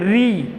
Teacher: ये जो री है इसका उच्चारण श्वास में जोर दे करके होता है। ये 2 मात्राओं का समय खाता है, इसीलिए क्या है दीर्घ री है।